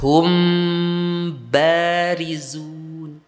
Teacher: itbaaknya itu dengan ditambah gunah ditambah suara gunahnya dipanjangkan